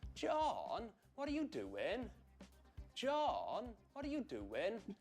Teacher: The reason for this is that in Welsh accent, what tends to happen is that vowel sounds are stretched out and stressed and there's a huge glide from high pitch to low pitch. The accent I'm talking about is the South Wales accent.